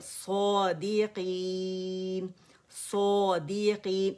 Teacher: صاد کی آواز کو الف صغیرہ کھینچ رہے اوپر کی جانب 2 کاؤنٹس کے لیے · سوا نہیں بولیں گے، ہونٹوں کو نہیں یوز کرنا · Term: مد اصلی